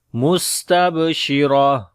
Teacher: On the sin we make hams and whistling quality, and then ta on the ba we make qalqala. Sheen we read with tafashi quality. Ra we read in heavy sound due to fatha sign on it, and when we stop here, so this ta we convert into ha.